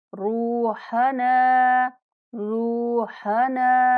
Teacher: रा को पूर्ण पढ़ेंगे और 1 सेकंड तक लंबा करेंगे